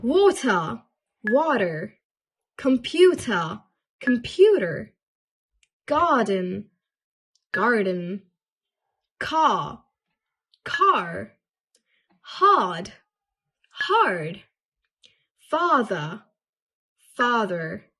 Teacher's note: in British accent, we don't usually pronounce the whole letter. Basically, we drop the R's at the end of a word or after a vowel.